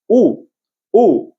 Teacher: ऊचा उच्चार होताना कसं होते बघा? तोंड चंबूसारखं होते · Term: ओष्ठ वर्ण